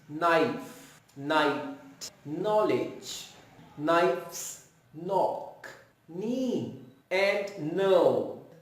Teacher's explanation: K is silent and we make the sound of N